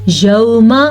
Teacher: میم کو لمبا نہیں کرنا کیونکہ میم کے اوپر صرف اور صرف زبر ہے